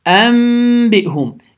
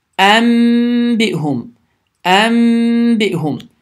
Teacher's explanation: Yəni n m səsinə çevrilir. N səsi m səsinə çevrilir. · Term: iqləb